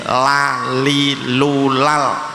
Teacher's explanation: ujung lidah menyentuh gusi, jadi tidak menyentuh gigi · lam itu makhrajnya ujung lidah nempel gusi, jadi tidak terkena gigi. La li lu lal, dan selalu dibaca tarkik la li lu lal, tidak ada le li lu atau lo li lu.